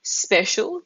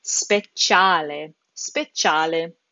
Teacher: special is a CI, it's a sh sound in English, but that combination in Italian becomes a ch sound. So speciale, speciale.